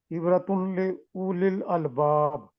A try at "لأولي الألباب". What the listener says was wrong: او نہیں پڑھیں گے، اولیل الباب.